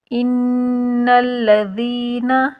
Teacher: نون مشدد کا غنہ کریں گے، ایک الف کے برابر رک کر۔ ناک میں آواز لے جانے کو غنہ کہتے ہیں اور ایک الف کے برابر رک کر غنہ کیا جاتا ہے۔